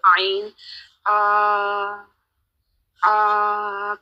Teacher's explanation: आद आइन गले के बिल्कुल सेंटर से